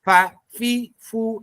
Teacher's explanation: Kalau fa itu gigi atas menyentuh bibir bawah yang basah.